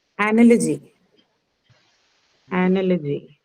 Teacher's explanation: the first sound in analogy is the schwa sound. It's unstressed.